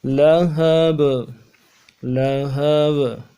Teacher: لہبن، وقت کی صورت میں با کو ساکن کریں گے اور با حرف قلقلہ میں سے جب ساکن ہوگا تو قلقلہ ادا ہوگا